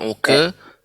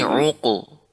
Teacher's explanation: Nah, ini juga qafnya juga tebal, tidak uqe. Bukan uke, tapi uqu.